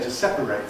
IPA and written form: ˈsepəreɪt (separate)